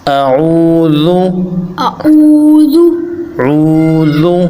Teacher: یہ عین ہے، اس کو گہرائی سے ادا کرنا ہے گلے کے اندر سے